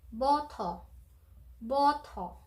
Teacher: sabi ko sa inyo, may pagka-British English ang way ng pronunciation ng Korean English. So, wala silang R.